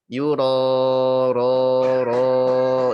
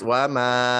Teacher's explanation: Keadaan alif ketika tafkhim ya pangkal lidahnya agak naik sedikit.